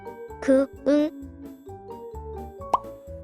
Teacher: 어금니 뒤쪽 목젖 부근 말랑한 곳에서 나는 소리가 여린 입천장 소리야